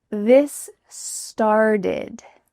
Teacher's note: The word start ends in a T, but this T is changing to a D. This is super typical in American English that T's change to D sounds.